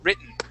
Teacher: So we jump from that R sound right to that N. We don't pronounce that T.